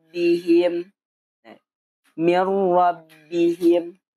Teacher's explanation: langsung ke kalimat atau huruf yang selanjutnya jangan ada dengung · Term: tanpa dengung